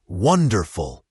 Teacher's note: Wonderful has the stress on the first syllable, wonderful.